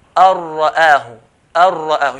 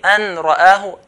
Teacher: The nun sakin will merge straight to the ra without any ghunna.